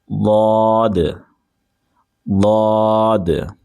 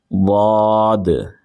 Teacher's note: ضاد، ضاد، ایک مرتبہ اور پڑھ لیتے ہیں، ضاد، ٹھیک ہے، زبان کو اوپر اٹھائیں گے اور زبان کی جو کروٹ ہے یعنی سائڈ ہے اس کو ہم اوپر کی داڑھوں کی جڑ سے لگائیں گے